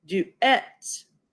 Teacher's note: this U is a vowel in an open unaccented syllable and so it's gonna be half long